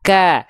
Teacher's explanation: Ketika kaf berharokat fathah jelas dia tipis, terdengar seperti vokal A